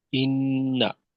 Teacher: নুনের জবরটা আরেকটু ছোট করতে হবে, একটু বড় হয়ে গেছে